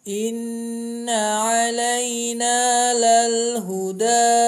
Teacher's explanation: kita jadikan 3 harokat ya, karena gunah sendiri sudah mengandung huruf dengung